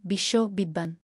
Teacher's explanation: শব্দের মধ্যে বা শেষে বফলা থাকলে সংযুক্ত বর্ণের উচ্চারণ দ্বিত্ব হয়, যেমন বিশ্ব, বিদ্বান।